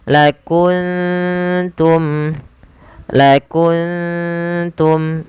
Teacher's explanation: Maka ini kita namakan dengan bacaan ikhfa. Maka cara membacanya samarkan suara nunnya ke huruf ta